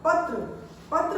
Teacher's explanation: पत्र बोलते हैं तो प, त, र, दो व्यंजनों की आवाज आ रही है, त और र, तो इकट्ठा लिखने में हम त्र लिख देंगे, पत्र।